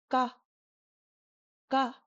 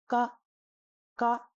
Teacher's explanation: And this is an extremely soft sound. It has no aspiration at all. ga ga Do you see how the tissue doesn't flutter at all when I say it?